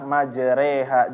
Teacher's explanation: fathah dimiringkan menjadi kasrah dan Alif dimiringkan menjadi Ya seperti e orang Timur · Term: imalah